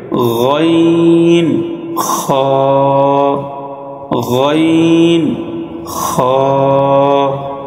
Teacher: 3 number মাখরাজ হলকের শেষ হইতে গাইন খ